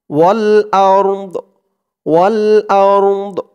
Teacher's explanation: হামজা দিয়ে র কেও ধরবে, দদ কেও ধরবে, দদের উচ্চারণটা আওয়াজটা লাস্টে একটু ভাসবে